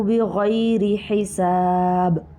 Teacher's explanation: بغیر حساب میں دیکھیے غین بھی پر ہے، را باریک ہے کیونکہ را کے نیچے زیر ہے